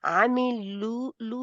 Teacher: اچھا ایک منٹ، یہاں جی پہ ماشاءاللہ کیونکہ جو جس مقام پہ ہے یعنی کہ جتنی جتنی پڑھ رہا عاملو لو کے لیے آپ کے ہونٹ بالکل گول ہو جانے چاہیے تھے